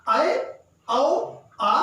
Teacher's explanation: उसके बाद विवृत मतलब विवृत में सबसे ज्यादा मुंह खुलेगा, ये क्रमशः बढ़ते हुए क्रम में है। विवृत में सबसे ज्यादा मुंह खुलता है